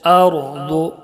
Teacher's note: ज़ाद को भी पुर पढ़ेंगे, मोटा पढ़ेंगे इसलिए कि हुरूफ मुस्तालिया के साथ हुरूफ में से ज़ाद है। · रा को पुर पढ़ेंगे इसलिए कि रा साकिन से पहले ज़बर है